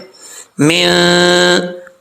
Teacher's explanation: وَمِن شَرِّ، نون ساکن کے بعد شین آ رہا ہے حروف اخفا میں سے، تو یہاں پہ نون ساکن کا اخفا ہوگا، یعنی آواز کو ناک میں چھپا کر پڑھیں گے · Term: اخفا کا غنہ